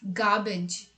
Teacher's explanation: there's no r sound in it